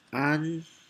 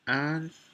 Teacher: And here we have the N and the NG thing. The difference is one you make your tongue in front, one make your tongue behind.